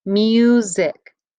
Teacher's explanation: the first syllable mu you hear a long u sound don't you like in mule that is an open syllable which means there is no consonant